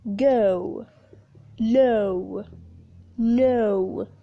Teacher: The last closing vowel is O, a combination of a schwa plus the short U